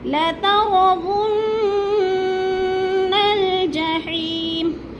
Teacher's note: نون نون مشدد پہ تھوڑا سا رکنا ہے جب ناک میں آواز لے جانی ہے